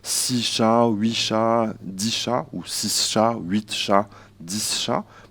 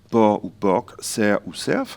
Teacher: la consonne est parfois présente, alors qu'elle est généralement absente en français hexagonal, français standard